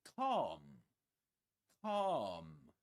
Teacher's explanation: Calm with a long R sound. · The L is silent.